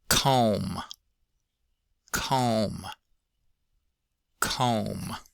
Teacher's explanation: Um, O in comb gives us a regular old O. And then at the end of comb, we have an M, but despite the spelling, we don't have a B